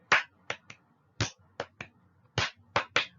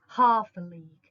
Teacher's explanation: one stressed syllable followed by two unstressed syllables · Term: dactylic meter